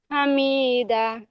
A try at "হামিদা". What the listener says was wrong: হামি, মিম টান হয়ে গেল, মিম টান হবে না, জাবার জের পেশ একটু টান